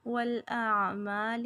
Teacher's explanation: یہاں پہ عین جو ہے وسط حلق سے نکالیں گے